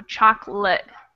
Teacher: This A kind of becomes a schwa sound.